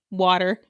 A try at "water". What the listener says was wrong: Use your T's. Use your T's. God gave us T's to use our T's.